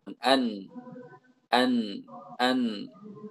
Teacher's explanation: Jadi nun ini lebih sedikit memakai ujung lidah. Ujung lidahnya tidak sebanyak lam.